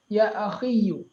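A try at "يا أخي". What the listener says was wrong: یا اخی. نہیں, یا پہ تشدید نہیں آئے گا, صرف یا ساکن. یا اخی.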